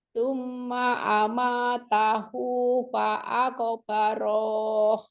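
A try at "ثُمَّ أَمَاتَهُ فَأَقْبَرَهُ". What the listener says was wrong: Ro-nya kan cuma 1 harokat. Jadi nggak boleh dipanjangin. Summa amatahu fa'aqbaroh. Pendek aja.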